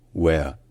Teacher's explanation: en anglais d'Angleterre on ne prononce pas le r lorsqu'il est à la fin d'un mot ou à la fin d'une syllabe sauf s'il y a une voyelle immédiatement après